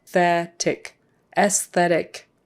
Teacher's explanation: So you do pronounce the S after the E, and it's an S sound, not a Z. S, and then TH, aesthetic, aesthetic.